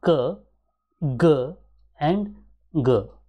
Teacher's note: the back of the tongue is raised and it touches to the soft palate